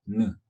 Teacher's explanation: 혀끝을 윗니 위에 잇몸에다 살짝 갖다가 떼면서 나는 소리죠. 느. 그러면서 코까지 울려요.